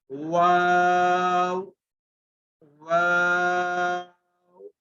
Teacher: जब वाव को प्रोनाउंस करेंगे यानी वाव की अदायगी होगी तो हमारे दोनों होंठ गोल हो जाएंगे और होंठों से प्रोनाउंस होगा, जैसे वाव वाव।